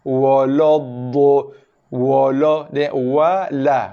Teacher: Wa nipis, la nipis. Dha aja tebal.